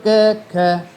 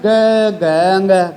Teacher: क ख बोला तो कुछ फर्क नहीं पड़ा फिर बोलो ग ग अंग गूंज पैदा होगी बोल के देख लेना च छ ज ज य गूंज आएगी